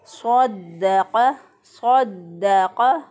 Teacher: दाल जो है इसको मजबूती और क़ुव्वत से पढ़ा क्योंकि दाल के ऊपर शद है। शद वाले हरफ को मजबूती और क़ुव्वत से पढ़ते हैं।